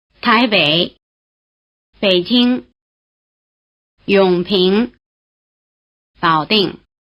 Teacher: the low tone stays low before the neutral tone. It also stays low before the high, rising, and falling tones. So basically, it stays low before any tone except another low tone.